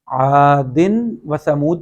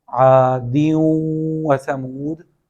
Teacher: عادن یہاں پہ تنوین کی ایگزامپل ہے، اور اس کے بعد حروف یرملون میں سے واو آ رہا ہے اگلے حرف کے شروع میں، تو وہاں پہ بھی ہم تنوین کی آواز نہیں نکالیں گے بلکہ دال کو واو سے ملا کے پڑھیں گے، لیکن کچھ نہ کچھ تنوین کی آواز باقی رہے گی۔ عادن و ثمود پڑھنے کی بجائے عادیوں و ثمود پڑھا جائے گا۔ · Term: مع الغنہ